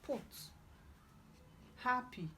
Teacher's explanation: Number 1, we have p, p. It is called bilabial plosive, as in put, happy.